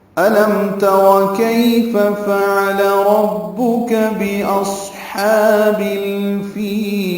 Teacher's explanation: حمزہ اقصی حلق سے ادا کریں گے بالجہر